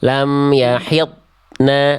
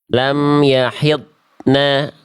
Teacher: Antara ad dengan na enggak boleh ada jedah ning dulu. Lam yahidna ngalir.